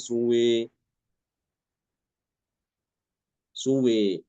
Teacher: ya wawu dan alif diimalakan